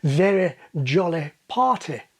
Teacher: Advanced RP speakers are more likely to have a relatively open final vowel in words like very jolly party.